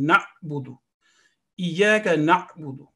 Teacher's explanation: And there is a sukoon on ayn, so there isn't a jerking sound.